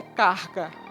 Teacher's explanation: Esse rótico é produzido na região velar só que Diferentemente do anterior ele é vozeado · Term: fricativo velar